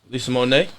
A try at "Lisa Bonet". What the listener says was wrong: No, with a B. Lisa Bonnet.